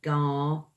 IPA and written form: ɡɑːˈɡantjʊən (Gargantuan)